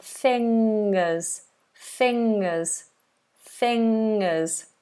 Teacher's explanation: fingers fingers lots of people have trouble with this NG sound back of the tongue high and this is a nasal sound